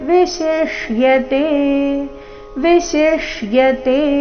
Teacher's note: ಎರಡು ಪ್ರಕಾರದ ಶರಲ್ಲಿ ಬಂದಿರುವುದನ್ನ ಗಮನಿಸಿ ಮೊದಲು ತಾಲವ್ಯಶ ಅದರ ನಂತರ ಮೂರ್ಧನ್ಯಶ